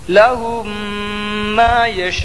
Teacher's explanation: اوپر زبر کی حرکت ہے لہم ہم میں ادغام شفوی ہوگا میم ساکن کے بعد میم آیا اس لیے میم کو میم سے ملا کر غنہ کے ساتھ پڑھا جائے گا